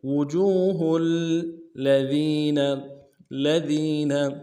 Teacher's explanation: ہا کو آگے لام کے ساتھ ملانا ہے، لام کے اوپر تشدید زور دیں گے۔ وجوہ الذین، الذین، اگلے لام کو نرم سے ادا کریں گے، ذال کو یا کے ساتھ ملانا ہے، یا مدہ ایک مقدار میں کھینچیں گے، نون کو نرم سے ادا کریں گے۔